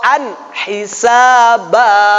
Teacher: ain itu tempatnya keluar dari tengah tenggorokan